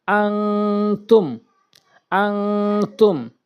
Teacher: এখানে দেখবেন তানভীন রয়েছে নুন সাকিন এবং তানভীনের পরে আসে তাহলে আপনি এই নুন কে এবং এই তানভীন কে নাকের ভিতরে নিবেন অনেক স্বর হিসেবে উচ্চারণ করবেন হামজা নুন জবর আন হামজা নুন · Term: ইকফায়ে হাকিকির